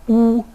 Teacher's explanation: U, which is a high back vowel